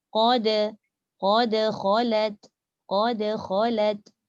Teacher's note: Sebelum masuk kha yang tebal tu, dal nipiskan dulu.